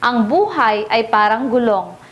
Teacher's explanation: Ang buhay ay binigyan ng diin sa unang pantig, kung kaya't ito ay nangangahulugan na life sa Ingles.